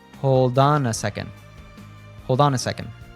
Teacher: And instead of saying it like hold on, we say a fluent hold on. The article a usually reduces to just a schwa sound, and connects to on